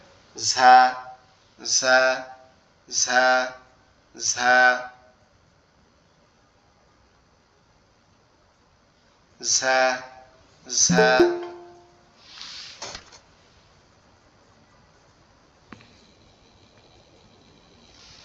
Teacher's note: এই অক্ষরটা উচ্চারণের জন্য আমাদের জিহ্বাটা নিচের দাঁতের সাথে ঝেড়ে দিতে হবে